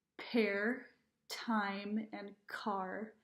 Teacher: So, for example, put your hand in front of your mouth and say pear, time, and car. You'll feel a puff of air hit your hand every time you make the P, T, and K sounds. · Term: Aspirating